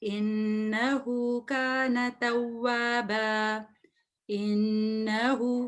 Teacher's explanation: So I did ghunna for 2 counts.